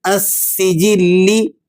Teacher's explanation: لفظ السجلی، اس میں جو الف لام ہے السجلی کے شروع میں، اس پر کوئی حرکت نہیں ہے، یہاں لام حرف سین کے ساتھ ادغام شمسی کی وجہ سے چھپ جاتا ہے، اس لیے لام کو ظاہر نہیں کرنا بلکہ سین کو تشدید کے ساتھ مضبوط پڑھنا ہے